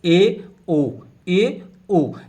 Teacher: अर्ध समृत स्वर में मुख जो है वह समृत से थोड़ा सा ज्यादा खुलता है। इसमें दो स्वर बोले जाते हैं, ए ओ।